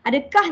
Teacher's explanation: Ada kah, lepas tu ada bunyi fa sedikit.